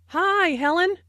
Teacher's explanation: notice that the I sound in high is extended to show that is very pleased to see Helen